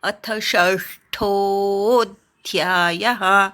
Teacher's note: ष्ठो वाढवायचा आणि अवग्रहावर आघात घ्यायचा. अध्यायः असं ऐकू आलं पाहिजे.